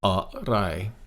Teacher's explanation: Arai is one word. First half of the word is low tone. Second half of the word is a flat tone.